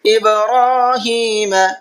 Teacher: با میں قلقلہ کریں گے، را کو کھینچ کر کے پڑھیں گے